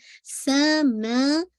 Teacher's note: سا کے اندر whistling sound واضح ہونی چاہیے